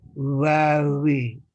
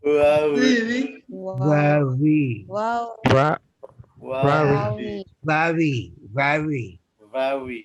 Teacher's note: ada bunyi B tetapi bibir tidak bertemu penuh